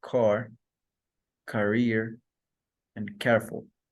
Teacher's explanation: The next plosive consonant is K, which is velar, plosive, and voiceless.